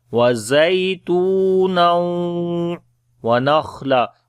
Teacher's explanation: On the kha we read heavy sound, and also we make hams quality continuation of our breath. Wa nakhla we long due to alif madda when we stop. · On the ya we make soft sound. Ta we long due to waw madda, and after the tanween there is waw, we make idgham with ghunna.